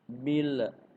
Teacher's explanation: Jangan ketika lam mati jangan sampai lidah kita memantul.